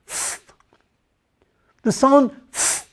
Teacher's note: we are going to produce the sound f, where the lower lip is in the bottom of the upper teeth, and it stays there.